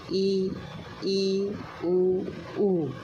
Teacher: जिन स्वरों के उच्चारण में मुख सबसे कम खुलता है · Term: संवृत